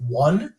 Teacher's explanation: one doesn't actually begin with a vowel it begins with a w because it's a homonym of one w-o-n you know so it